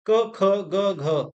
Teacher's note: next question देखेंगे क वर्ग का उच्चारण स्थान कहां से है जब का हम बोलते हैं तो हमारे कंठ से आवाज आती है